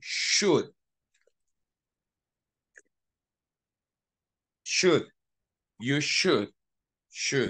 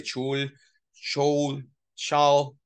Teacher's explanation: remember the L is silent and we say should